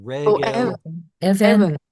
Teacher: So basically it's a segelit. It has two short vowels, or at least the second vowel is short. And it has penultimate stress.